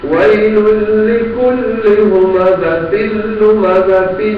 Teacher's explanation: ویل لکل، اس کے بعد ہمزہ، تنوین، تنوین کے بعد لام، تو نون نہیں پڑی جائے گی، لام پڑی جائے گی، ادغام ہوگا